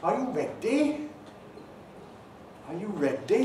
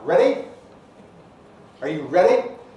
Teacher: That's a slow D. That's characteristic of Welsh English, perhaps exaggerated Welsh English.